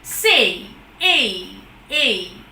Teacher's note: diphthongs are sounds where we have two vowel sounds coming together it begins with one vowel sound and moves on to the other vowel sound but does not quite reach there